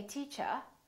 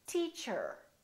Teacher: silent the first one that I did was a British R in British English people generally don't pronounce the final R the r at the end of the word